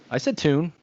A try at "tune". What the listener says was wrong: Sounded like you said tone.